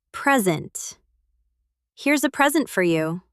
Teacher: As a noun or adjective, the stress is on the first syllable.